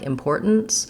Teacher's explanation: We run into this stop T and N combination in words like importance.